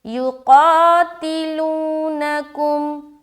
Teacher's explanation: تو یقاتلونکم، یہاں پر خاص خیال رکھے کہ حرف قاف کے ساتھ الف مدہ ہو رہا ہے، لہٰذا اپنی آواز کو موٹی رکھنی ہے الف مدہ کرتے ہوئے